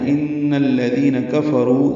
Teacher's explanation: ان میں نون مشدد ہے اور اس کو الذین کے لام سے ملانا ہے